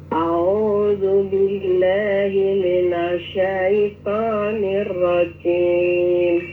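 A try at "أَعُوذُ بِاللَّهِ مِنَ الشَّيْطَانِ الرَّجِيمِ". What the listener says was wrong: Coba diulangin. A'u. Jadi jangan au tuh, tapi a'u jim. Jadi, kalau Jawa itu problemnya keluar dari dialek ibu kita, dialek budaya kita sebagai Jawa. Jadi jangan jim, tapi jim. A'udzu billahi minasyaitonir rajim.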